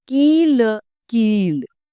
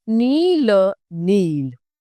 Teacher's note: यह दीर्घ स्वर में आती है जिसको बोलने में ज्यादा लंबे समय लगता है। यह इस तरीके से किसी व्यंजन के पीछे से लगाई जाती है और उसके उच्चारण को प्रभावित करती है।